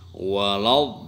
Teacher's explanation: Bacaan harus panjang 6 harokat baru diikuti dengan tasjid. Nah, ini istilah tajwid disebut mad lazim musaqqal kilmi.